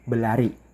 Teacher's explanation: Jadi, itu adalah fungsi grafem karena ketika kita mengucapkan seperti kata berlari tadi, ketika mengucapkannya dengan cepat maka i- aku ingin berlari. Jadi, r-nya itu menjadi hilang.